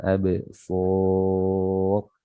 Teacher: Di sini ba sukun qalqalah jadi qalqalah dipantulkan. Ini namanya qalqalah sughra ya karena dia di tengah ya dipantulkan absar.